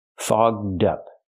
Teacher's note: We have to use the open vowel aw and the voiced g and d. Fogged up. To help with pronunciation, link the d sound to the second word up, so you have dup.